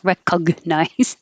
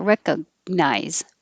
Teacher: make your tongue go up in the g position even though you don't release it